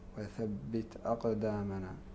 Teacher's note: التاء حرف شدة ينحبس النفس عند النطق به